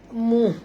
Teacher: matikan ha ni betul-betul bunyi dia muh